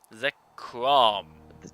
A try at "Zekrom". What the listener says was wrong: You don't have to pause, just Zekrom. You sound like you're trying to morph into a Power Ranger or something.